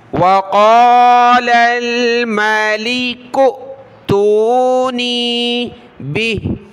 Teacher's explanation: حمزہ ساکنہ ہے تو جھٹکے کے ساتھ پڑھنا ہے